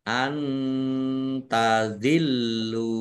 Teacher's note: nun sukun bertemu dengan huruf ta bacaan Ikhfa dibaca samarsamar